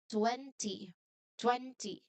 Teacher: So the stress here or the loud part is on the first part.